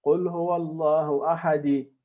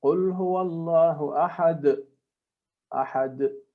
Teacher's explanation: That is a proper Qalqalah. So the sound has to be Sukoon, not Fatha or Kasra.